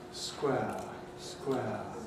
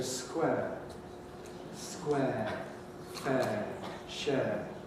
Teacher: quite a substantial number of british people now pronounce this as a monophthong